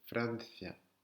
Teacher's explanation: C'est comme un TH anglais, c'est th, pas ce, th, Francia, en mettant la langue entre les dents.